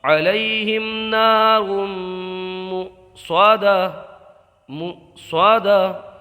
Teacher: علیہم میں گنہ مت کیجئے، اظہار شفوی ہوگا